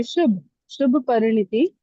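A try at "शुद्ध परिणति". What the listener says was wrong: Shubh nahi, Shuddha, pure.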